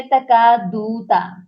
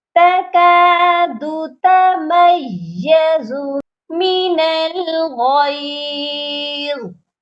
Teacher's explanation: دال کے اوپر جو ہے پیش کی حرکت ہے، اس کو کھینچنا نہیں ہے، دو چھوٹا پڑھنا ہے۔